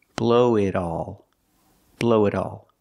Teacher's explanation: the T in it changes to a fast D